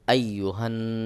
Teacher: হান নুন জবর না আইয়ুহান এখানে গুন্নাহ করতে হবে ওয়াজিব গুন্না নুনের উপর তাশদিদ রয়েছে অবশ্যই গুন্নাহ করতে হবে